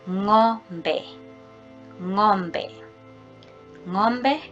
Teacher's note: So the nga sound, there's no that G sound, you cannot feel it